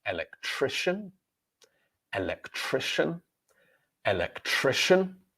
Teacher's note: However, when we talk about the person's job, it is electrician. So the C in the word becomes a sh sound.